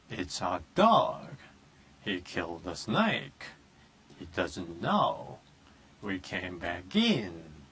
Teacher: 근데 마지막에 스트레스가 딱 가는 부분에는 높이면서 오랫동안 조금 길게 끌어주신다는 느낌이죠.